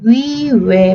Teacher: 위, 왜 발음하면 입 동그래지는 거 느껴지죠? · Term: 전설의 원순모음